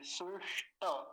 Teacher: बीच में क्या है? मूर्धन्य शकार। मूर्धन्य शकार को तो बिल्कुल नहीं भूलना नहीं तो यही बहुत गलतियां होती हैं।